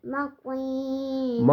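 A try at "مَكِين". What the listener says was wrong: مکین، کاف کو ہلکا پڑھیں گے بیٹا، بغیر سادہ سمپل سے مکین، تاکہ اس کاف کا دوسرے 2 نقطوں والے کاف کے ساتھ اس کا جو کیا ہو جائے، فرق واضح ہو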